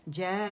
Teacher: اور اسے 4 یا 5 کاؤنٹس کھینچیں گے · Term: مد واجب المتصل